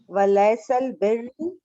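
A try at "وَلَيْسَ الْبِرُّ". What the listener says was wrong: البر ولیس البر ہے، بر نہیں،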